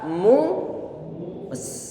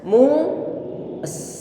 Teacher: mem dia didhammahkan, kita monyongkan bibir, kemudian sin, bibir sudah kondisi datar kembali dan kita alirkan suara pada huruf sin